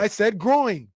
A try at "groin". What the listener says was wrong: You're extending the "een" out more. It's just groin. groin.